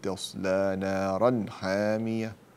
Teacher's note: نارا تنوين بعده حاء والحاء من حروف ماذا؟ الإظهار، فأظهر التنوين